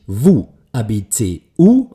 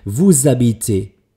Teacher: die ersten beiden fließen eigentlich zusammen in ein Wort hinein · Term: stumme h